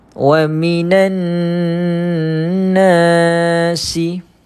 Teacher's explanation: Kemudian alif tidak berbaris, kita jumpa dengan mad asli. Baca panjang 2 harokat.